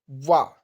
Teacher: तो दंत और ओष दोनों मिलकर के लगते हैं · तो दंत और ओष्ठ दोनों मिलकर के लगते हैं, इसलिए ऑप्शन ए दंतोष्ठ आपका सही आंसर हो जाएगा।